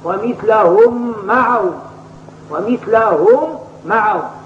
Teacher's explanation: ويجب أن يكون الادغام هنا بغنة لأنه يصير من باب الميم المشددة، وكل ميم مشددة لا بد من مصاحبتها لغنة، فغنة نونا ثم ميما شددا، وسمي كل حرف غنة بدا، وغنة قد أوجبوها أبدا في النون والميم إدامة شددا كما هو مقرر عند أهل العلم بالتجويد. · فمثلهم هذه ميم ساكنة، فإذا وصلتها للميم التي تليها فلا بد من إدغامها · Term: الادغام بغنة